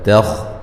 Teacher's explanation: تا کو باریک، خا کو موٹا